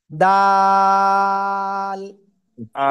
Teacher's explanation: জিহ্বার আগা উপরে দুই দাঁতের গোড়ায় লাগান, লাগান লাগান, লাগিয়ে তিন আলিফ টানে উচ্চারণ করেন